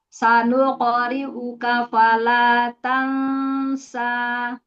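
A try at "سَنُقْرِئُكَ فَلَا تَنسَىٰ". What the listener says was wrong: Tipiskan lagi ikhfanya. Tansa.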